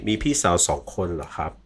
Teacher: whether it's a question or a statement, the tone doesn't change, which is different to English.